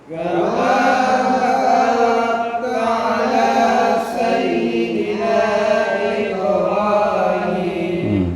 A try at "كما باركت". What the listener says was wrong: Ba ada alif. Kama barakta ala, bukan kama barakta. Ba itu ada mad, ada alif. Kama barakta ala sayyidina Ibrahim.